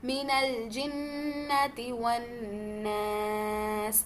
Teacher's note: لام سکون پہ تھوڑا سا کوشش کریں کہ تھوڑا سا سٹاپ ہوتے ہوئے لام کو باؤنس بیک نہ کریں